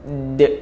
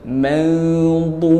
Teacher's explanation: Baru kita lantunkan huruf dal yang mana kita kena tekan dulu hujung lidah dengan gusi gigi gunting sebelah atas, baru lantun. D. Dia kena bunyi d tu. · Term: lantunan pada huruf dal